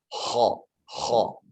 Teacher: Kho yang paling benar seperti yang Bapak sebutkan tadi, yakni di dalam tenggorokan. Karena huruf kho ini berada di dalam tenggorokan. Dia bunyi seperti serak gitu ya.